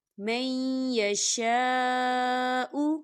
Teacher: خالی الف سے پہلے زبر ہے اور اس کے اوپر جو ہے مد ہے، تو اسے 4 حرکت کے برابر کھینچ کے پڑھیں گے